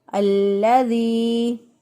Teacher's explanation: اللہ، اللہ، ذال دیر یا ذی، ذال کو نرمی سے ادا کریں گے۔ زبان کی نوک جب اوپر والے دانتوں کے سامنے والے دو دانتوں کے کنارے سے لگے گی تو اس وقت ذال ادا ہوگا۔